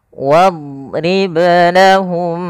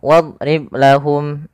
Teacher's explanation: Qalqalah yaitu berasal dari kata qalqala yuqalqilu qalqalatan yang artinya ittirab. Ada getaran, ada pantulan di situ dalam suara huruf ba-nya. Makhraj huruf ba adalah bibir kita.